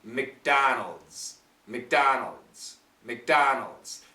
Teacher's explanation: the tip of your tongue is pushing up for the D D D D right and the sides of your tongue are also up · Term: Z sound